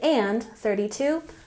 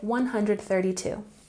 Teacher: in British English we say and 32 but in American English we say 132